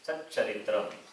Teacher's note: Takara will be replaced by the corresponding letter of Chavarga, which is Cha.